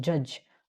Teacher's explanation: ठीक है, जो वॉइस्ड है ज, जैसे लाइक जज. ठीक है, आप बोलते हो जज, तो आपको एक वॉइस्ड फील होता है ज के साउंड में